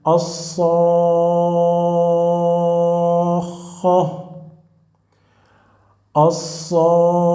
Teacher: So as the first letter is with Sukun, the preceded letter is letter of Madd, here you should apply Madd Lazim, mandatory Madd. You prolong the sound of the letter of Madd 6 harakat.